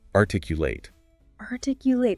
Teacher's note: The stress shifts. It moves towards the end, and the final syllable becomes articulate, a long A sound.